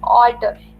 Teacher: Alter में first syllable जो है all, that is stressed, ter is unstressed.